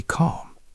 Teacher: Notice how the word calm has a silent l. We do not say the L sound. We just say calm.